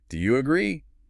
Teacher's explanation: See how high my voice goes on agree? · Up. Imagine your voice is climbing a small set of stairs at the end of the sentence.